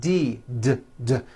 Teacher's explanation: head ends with a voiced d